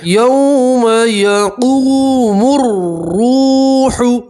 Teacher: واو مدہ میں ایک الف کے برابر کھینچ کر پڑھتے ہیں